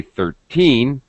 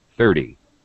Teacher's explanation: What you have to understand and know and recognize, what they're testing, is do you understand that the stress is, the word stress is on teen, 13. It's higher pitch, it's stretched, it's a little longer sound. 30, the second syllable, the pitch goes down, and it's very fast.